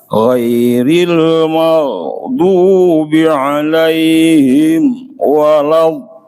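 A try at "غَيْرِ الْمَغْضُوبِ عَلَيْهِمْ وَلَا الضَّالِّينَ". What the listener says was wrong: Tidak boleh ada sedikit pun jeda gitu. Jadi langsung nyambung aja. Ghairil maghdubi 'alaihim walad. Dalam harakat memang agak berat, tapi sebisa mungkin disempurnakan 6 harakat.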